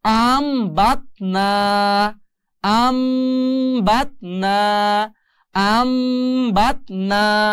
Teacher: এই নুন সাকিনের বামে বা আসার কারণে এই নুন সাকিনটা মিম দিয়ে পরিবর্তন করতে হবে। আর সেই জন্য এখন উচ্চারণ হবে আন থাকবে না, আম হয়ে যাবে।